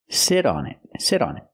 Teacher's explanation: that t in sit changes to a fast D because it's between vowels